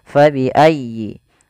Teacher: fa harus dialirkan jangan sampai diganti dengan p